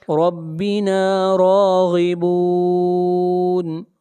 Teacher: را کو موٹا پڑھیں گے، غین کو موٹا پڑھیں گے ، غین حروف مستعلیہ میں سے ہے،